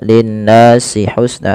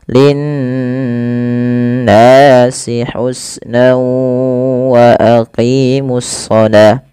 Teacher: Pada lafal nun berharakat tasydid itu wajib ditahan suara n ya. Nah, ini yang kita namakan dengan gunnah.